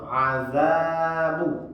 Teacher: Za tadi panjang juga, azabu panjang juga, panjang 2 harakat.